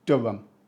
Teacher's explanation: even the queen wouldn't pronounce the h here